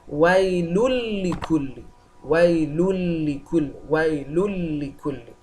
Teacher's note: So there is no form of nasalization in the word.